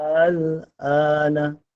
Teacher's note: Tu yang mad lazim. Yang a tu yang baca dengan kadar 6 harakat. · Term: mad lazim kalimi mukhaffaf